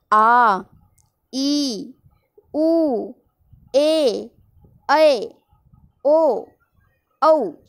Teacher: इनके उच्चारण में ह्रस्व स्वरों के उच्चारण से दुगना समय लगता है। मतलब ह्रस्व स्वर में जो टाइम लगा उसका डबल टाइम इसमें लगेगा। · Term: दीर्घ स्वर